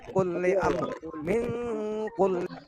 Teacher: Jadi dengan agak didengungkan ya. Bacanya samar dan dengung. Karena ada ro matinya agak dibaca juga ya, agak dimunculkan sedikit ro-nya.